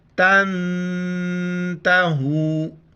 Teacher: لام زبر لا، حمزہ لام زیر ال، لَإِلْ لَإِلَّمْ لَإِلَّمْ تَنْتَهُوا، نون ساکن ہے یہاں پر ہم اخفا کریں گے، ناک میں آواز پیدا کریں گے